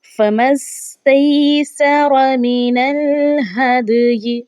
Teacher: दाल पे हमने खूब कलकला करना है क्योंकि ये हरूफ़ कलकला में से है।